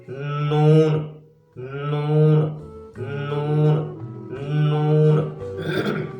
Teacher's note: نوک زبان ثنایا اولیاء، ربایا، انعام سے لگانے سے، یعنی ان کے مسوڑوں سے لگانے سے نون کی آواز پیدا ہوتی ہے۔